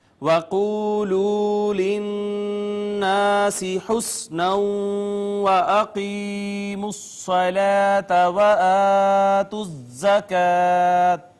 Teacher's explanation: یہاں پہ ناظرین دیکھیں واو کا ما قبل مضموم واو مدہ, یہاں بھی مضموم واو مدہ, نون مشدد اور میم مشدد پہ ہم نے کہا کہ غنہ کرنا واجب ہے, ہمیشہ ناک میں آواز لے جائیں گے. پھر الف کا ما قبل مفتوح الف مدہ ہے.